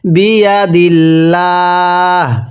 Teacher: যদি এখন আমরা বিয়া দিল ল পড়ি তাহলে শুদ্ধ হবে না, কারণ আল্লাহ শব্দের পূর্বে যে থাকলে আল্লাহ শব্দটিকে বারিক করে অর্থাৎ চিকন করে পড়তে হয়